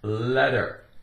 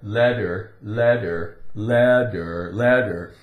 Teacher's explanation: it's very common for a t in the center of a word or inside a word to be pronounced with more of a D sound